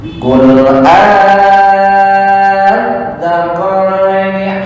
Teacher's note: untuk zal murni ya, maksudnya ujung lidah dicepit dengan gigi seri atas.